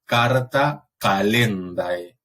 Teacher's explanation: como un sonido exclusivo velar sordo